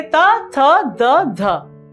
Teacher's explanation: जब हम त वर्ग के वर्णों को, जैसे त, थ, द, ध, इसका हम प्रयोग करेंगे तो जीवा जो है हमारे दांत को स्पर्श करती है। त, तो जीवा जो है दांत, ध भी ऐसे त, थ, द, ध, ये जो है हमारे जीवा को स्पर्श करते हैं, इसीलिए इसे दांत को स्पर्श करते हैं, इसीलिए इसे दंत्य वर्ण कहा जाता है।